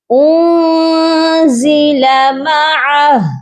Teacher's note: معہ، ہا کی آواز آپ کے سینے سے آئے گی لیکن کلیئر ہونی چاہیے. اس کے اوپر جو مد ہے اور الٹا پیش ہے اس کو آپ ڈراپ کر دیجئے گا اور ہا کو ساکن کریں گے